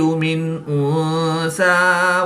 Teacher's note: نون ساکن کے بعد حروف حلقی میں سے حمزہ ہے تو یہاں پر اظہار ہوگا، غنہ نہیں کریں گے